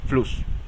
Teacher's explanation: Una doble S se pronuncia como una sola S, pero causa que la vocal anterior se acorte.